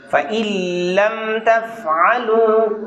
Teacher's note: نون پڑھنے میں نہیں آئے گا، ان لم نہیں کہنا، لم کہنا ہے